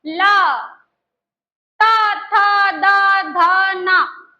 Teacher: देखिए जब आप बोलेंगे ला, ता, था, दा, धा, ना, आपकी जिह्वा आपके दांतों को टच करती है, बिना दांतों को टच करे ये वर्ण उच्चारित नहीं किए जाएंगे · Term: दंत्य वर्ण